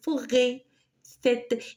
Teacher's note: il est proche du E, mais il est plus tendu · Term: accent circonflexe